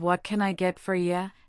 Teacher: Another key point is the intonation. The barista's voice goes up at the end of what can I get for ya, indicating a question.